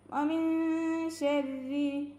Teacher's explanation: നൂനിനെ മറച്ച് വെച്ചിട്ട് മണിച്ചോതുക. നാവ് മുകളിൽ തട്ടരുത് കേട്ടോ, നമ്മുടെ നാവ് എന്ത് ചെയ്യരുത്, മുകളിൽ തട്ടാതെ. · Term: ഇഖ്ഫാ